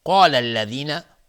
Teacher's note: قاف از حروف استعلاس غلیظ تلفظ میشه، الف هم تابع قاف غلیظ تلفظ میشه